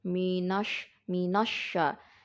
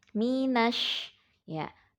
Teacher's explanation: Jangan terikut tebal karena ada sya. Jangan menjadi minosya.